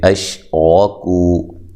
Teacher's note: حمزہ کو تحقیق سے ادا کریں گے، شین کو ہلائیں گے نہیں، را کو موٹا ادا کرنا ہے، کو واو مدہ ہے۔